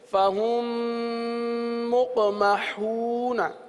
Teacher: اب فہم ملا کر ایک حرف پڑھا جا رہا ہے، صحیح ہے نا، دو حرف نہیں پڑھے جا رہے. میم کو میم کے اندر ملا دیا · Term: ادغام شفوی